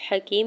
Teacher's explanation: یا ساکن سے پہلے کاف کے نیچے زیر ہے، یا مدہ ہو رہا ہے 2 حرکت کھینچ کے ادا کریں گے